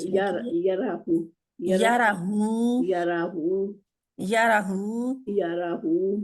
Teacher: रा लंबा रा जो है लंबा नहीं है मोटा